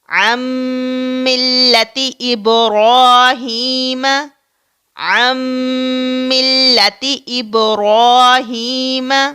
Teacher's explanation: ہم عین اور میم کو ملا رہے ہیں اور نون کہاں جاتا ہے؟ وہ اس میم کے اندر جذب ہو جاتا ہے. اسی کا نام ادغام ہے.